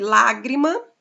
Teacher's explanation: a antepenúltima é a sílaba acentuada sílaba forte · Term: proparoxítona